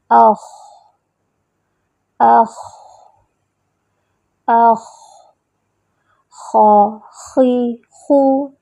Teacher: ادنیٰ الحلق سے ادا ہونے والے حروف غین اور خا، ان حروف کو حروف حلقی کہتے ہیں کیونکہ یہ حلق سے ادا ہوتے ہیں نا، تو ان کو حروف حلقی کہتے ہیں.